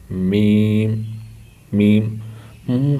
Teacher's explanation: با، یہ دیکھیں، یہ ہونٹ ہے، ان کا جو گیلا حصہ یعنی کہ دونوں کا اندرونی حصہ جو ہے اس سے با ادا ہوتی ہے، با۔ اچھا، میم ہونٹوں کے خشک حصے سے ادا ہوتی ہے